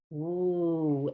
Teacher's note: use your two lips woo and let the air continue